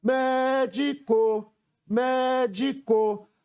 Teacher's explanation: a sílaba que eu pronunciei com mais força, a sílaba tônica da palavra, foi o mé, e ela está na antepenúltima sílaba.